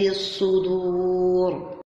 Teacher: الصدور الصاد تشد والراء تفخم